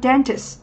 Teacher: chúng ta có danh từ trọng âm rơi âm tiết thứ nhất